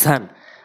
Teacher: ঝান জিব্বার আগা, উপর নিচে দুই দাঁতের আগা